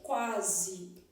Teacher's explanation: Na palavra quase, o U e o A, eles estão formando um ditongo, quase. Aqui, ó, uma semivogal e uma vogal. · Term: ditongo crescente